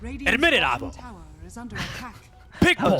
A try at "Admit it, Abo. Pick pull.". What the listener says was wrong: So, wait, why'd you go lower? That's not Suns fan's voice. Higher. Higher. Higher than what you did.